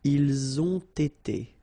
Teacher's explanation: You get first the liaison z and then you get the t.